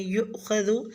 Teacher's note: لفظ فیؤخذ میں واو حمزہ پہ جھٹکا دیں گے